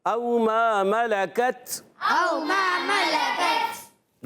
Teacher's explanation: تا اور کاف شدیدہ مہموسہ حروف ہوتے ہیں، سختی کے ساتھ آواز بند ہوتی ہے، پستی نرمی سے سانس جاری رہتا ہے، تو آواز آتی ہے او ما ملکت.